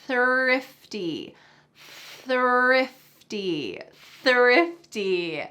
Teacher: my tongue is between my teeth and there's a stream of air coming out.